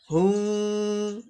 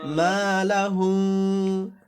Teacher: এই যে গুণনা করব, মিমে গুণনা করব, কারণ মিমের পরে এই যে বা আসছে, তাহলে হুম। হ্যাঁ, দুই ঠোঁট কাছাকাছি নিয়ে আসবেন কিন্তু লাগতে দিবেন না।